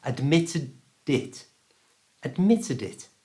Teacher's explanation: word it and it starts with a vowel sound I so we're going to move the d ending from the end of admitted to the front of it